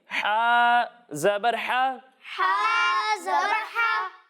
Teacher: जब हम हा की अदायगी करेंगे तो इसे हलक के दरमियाने हिस्से से पढ़ेंगे